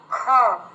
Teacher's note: খটা কি বলার পরে আপনার হাতে হাওয়া লাগছে, বাইরে যদি হাত রাখেন সেটা লক্ষ্য করুন তো। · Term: মহাপ্রাণ